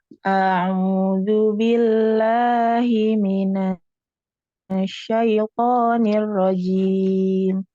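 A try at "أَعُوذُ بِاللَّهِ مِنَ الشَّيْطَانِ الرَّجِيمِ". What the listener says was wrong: Nirrojim. Jimnya jangan sampai ada desis ya, jangan ada hamas ya, tidak ada aliran nafas yang alir ya. Nirrojim, jangan nirrojim, tapi rojim.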